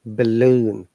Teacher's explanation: Like in balloon, A is a schwa sound.